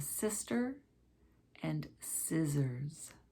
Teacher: sister with two of the s sounds and scissors with an s and two z sounds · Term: s and z sounds